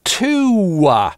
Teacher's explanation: а здесь у нас linking [w], потому что предлог здесь в полной форме